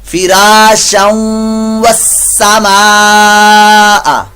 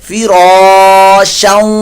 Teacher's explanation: یہ تنوین کے بعد واو آ گیا تو یہاں پر ادغام مع الغنہ کا قاعدہ غنہ ہوگا